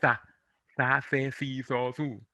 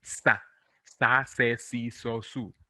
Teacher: And then we have this sound, zeta, where if you are in Spain, you will hear people saying sa, se, si, so, su, like th in thing. But in Latin America, we pronounce it like an S.